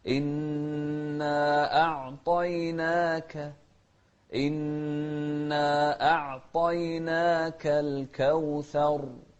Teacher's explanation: أعطي والطاء مفخمة. والنون بعدها ألف أيضا مرققة، والكاف نهمس فيها